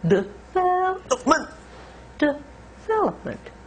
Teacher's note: In American English, we stress the second syllable, vel. Now, stress again means that it can be longer, louder, or higher in pitch.